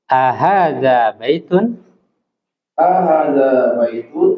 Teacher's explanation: jadi a-nya pendek ya yang panjang itu h-nya